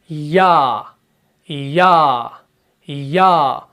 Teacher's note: जब आप या को पढ़ते हैं ना, तो आपकी जुबान का जो बीच वाला हिस्सा है ये थोड़ा सा मूवमेंट कर रहा है।